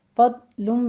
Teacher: ضاد کو آپ نے پر پڑھنا ہے اور زبان کی کروٹ اوپر داڑھوں کے ساتھ لگا کے سٹاپ کر دینا ہے، اس کو قلقلہ نہیں کرنا